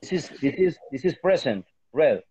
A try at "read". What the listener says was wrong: No, the present is read. Read. the past, The pronunciation is red. The spelling is the same. No changes. But the pronunciation, yes.